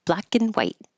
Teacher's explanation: Black and white, and you don't say the T.